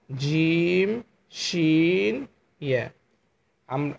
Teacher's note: and last 6 নম্বর মাখরাজ হচ্ছে জিহ্বার মধ্যখান তার বরাবর ওপরে তালুর সঙ্গে লাগিয়ে 3টা হরফ উচ্চারণ করতে হবে